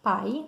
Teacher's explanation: duas vogais, uma com som forte e uma com som fraco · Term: ditongo